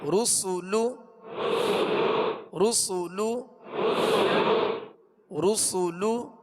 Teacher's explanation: را پر پڑھیں گے، سین کو سیٹی کی آواز میں باریک پڑھیں گے